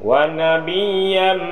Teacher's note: Ya, wa nabiyyam ini wajib. Idgham ma'unah masuk dengan dengung.